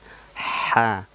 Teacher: Dia memiliki sifat hams, berarti mengeluarkan nafas.